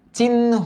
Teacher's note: আগে ন এর উচ্চারণ আসবে পরে হ এর উচ্চারণ আসবে